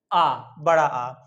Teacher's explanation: फिर अगला आता है विवृत स्वर, यानी कि ऐसा स्वर जिनके उच्चारण में हमारा मुंह पूरा का पूरा खुला रहता है